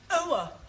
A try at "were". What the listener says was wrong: Almost. Try again, but this time, don't say ower, just were. Were.